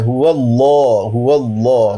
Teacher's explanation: هو اللہ مفخم منہ بھر کے